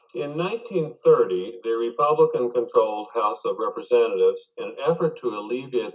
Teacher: his voice is all on one level pretty much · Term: monotone